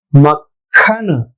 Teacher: मक्खन, ये गलत है, मक्खन, क ख, दोनों ख ख महाप्राण नहीं है, एक अल्प प्राण है एक महाप्राण है